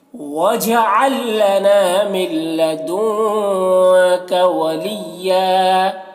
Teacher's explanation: لدن کا کہ نون میں اخفا ہو رہا ہے، نون کی آواز کو ناک میں چھپا کر پڑھیں گے · یہاں پر نون ساکن کے بعد لام ہے تو یہاں پر ادغام تام ہو رہا ہے، اسے بغیر غنہ کا پڑھتے ہیں